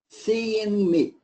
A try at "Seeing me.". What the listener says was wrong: I want the ing. Seeing.